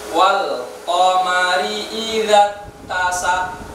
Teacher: Qafnya tidak ada qalqalahnya, tidak memantul, sehingga makhrajnya tidak tepat.